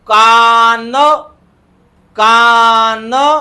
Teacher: तर नेहमी लक्षात घ्यायचं जेव्हा आपण कान शब्द उच्चारतो कान कान तर आपल्या जिभेचा शेंडा वरच्या दाताच्या पाठीमागच्या बाजूला स्पर्श करतो